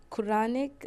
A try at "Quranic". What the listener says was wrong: Chronic. Koran school. Koran. think you said chronic.